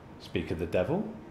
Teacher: we use rising intonation on devil so devil to show that we're surprised about the situation speak